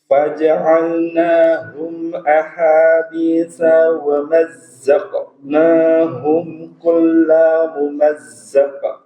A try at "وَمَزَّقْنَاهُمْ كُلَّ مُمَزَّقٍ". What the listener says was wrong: Di kalimat kulla la juga nggak boleh dipanjangkan. Wa mazzaqnahum kulla mumazzaq.